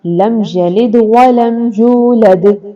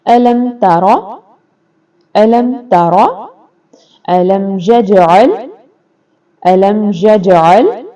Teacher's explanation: اظہار شفوی، یہاں پر غنہ نہیں ہوگا